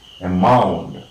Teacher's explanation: The primary word stress is on the second one, and we are marking it this way.